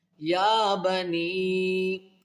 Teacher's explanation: یا کو الف کی مقدار کھینچے گے